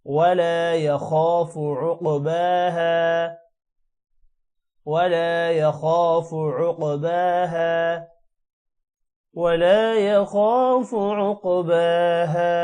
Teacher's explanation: ولا يخاف عق قوف موٹا ہوگا اور قوف پر قلقلہ بھی ہے. عقباها با کو تھوڑا لمبا کریں گے، کھڑی زبر ہے اس وجہ سے، اور ہا الف کی وجہ سے لمبا ہوگا